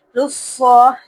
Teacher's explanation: لام کو پر نہیں پڑھنا، صاد کو پر پڑھنا ہے